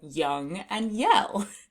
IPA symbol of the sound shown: y